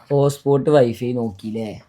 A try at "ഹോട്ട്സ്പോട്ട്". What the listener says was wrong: ഹോട്ട്സ്പോട്ട് അല്ല കേട്ടാ, ഹോട്ട്സ്പോട്ടാണ്. ആ ടീ ഉണ്ട് അവിടെ.